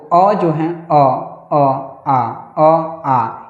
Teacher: ये वर्ण जो है कंठ से ही निकलते हैं। गले से ही निकलते हैं।